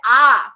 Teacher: বিবৃততে আমরা দেখব ঠোঁটটা পুরোপুরি খুলছে সেই কারণে সেটাকে বলা হচ্ছে বিবৃত স্বরধ্বনি